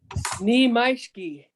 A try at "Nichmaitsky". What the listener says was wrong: Remember, it's nich. it's nich. You gotta have that in there. Nich.